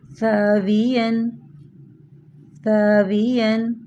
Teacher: زبان کی نوک سامنے والی اوپر کے دو دانتوں کے اندرونی کناروں سے لگے تو سا ادا ہوتا ہے